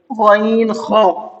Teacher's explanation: غین خا، ان کا مخرج ہے اخیر حلق سے ادا ہوتے ہیں